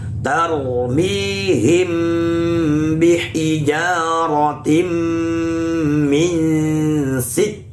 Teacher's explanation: Min dibaca dengung yang lama. Kenapa? Karena tanwin bertemu sin. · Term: ikhfa hakiki